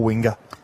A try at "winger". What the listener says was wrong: There's no a at the end. It's e r.